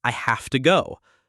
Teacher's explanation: The have to links and changes into hafta.